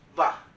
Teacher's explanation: v so letter v and letter b are basically the same letter b and letter v are basically pronounced the same they sound the same they look different but they're pronounced very very similar if there's